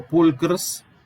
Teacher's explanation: la O entre las dos consonantes se debilitó y cayó, quedó pulcrs, la vibrante por asimilación progresiva, al revés, perdón, la sibilante, la S, por asimilación regresiva, se asimiló a la R, la doble R simplificó en una sola y quedó pulcr.